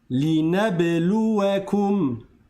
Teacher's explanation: Le ba, il y a un soukoun mais il y a une qalqala.